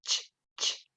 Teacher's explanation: the coalescence in which we use ch, ch, instead of don't plus you